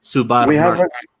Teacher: So it sounds like you're taking the unvoiced p sound and turning into a voiced b sound in Arabic.